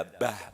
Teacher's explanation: di huruf terakhir adalah ha, maka bah, ya terasa sekali di getaran di dada, bah, bukan bah, tapi bah, ya harus nampak ya meskipun di huruf terakhir.